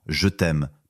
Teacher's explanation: Par exemple, dans je t'aime, pas de e entre t et m, mais attention, devant deux consonnes, tu le gardes parfois juste pour que ça roule mieux à l'oral. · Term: e muet